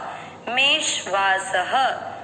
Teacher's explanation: स में अ की मात्रा तो विसर्ग को पढ़ेंगे ह